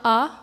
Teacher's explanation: conte du bocal et le à caen vous prononcez 1 à vous ouvrez bien grand la bouche donc là c'est une voyelle ouverte